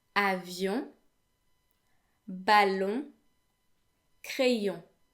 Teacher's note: the way it's pronounced is pretty much like the sound O, but instead it is nasal. So what that means is when you say O, some air flows out, whereas when you say your lips are still rounded, but no air actually comes out.